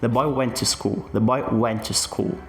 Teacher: Lembra que eu falei com vocês que preposições e artigos tendem a ser suprimidos quando eu tô falando aqui no inglês, quando eu tô usando aqui línguas que tendem a ter base aqui nas sílabas tônicas, a gente tem aqui o the, que é suprimido, e também o to, que é que é quase como suprimido. · A minha a minha força aqui, né, o meu destaque aqui vai ser nas palavras boy, went e school.